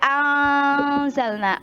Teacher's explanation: nun sukun bertemu huruf za itu dibaca ikhfa